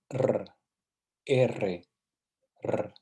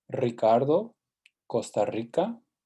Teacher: listen through these as you practice the sound more complex is the double R which is called a trilled r and that sound is so you can practice that again Roo